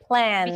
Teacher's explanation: actually the L in plan is light.